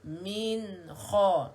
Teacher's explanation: nun sukun bertemu dengan kha. Jelas sebutannya sebab nun bertanda mati, izhar halqi.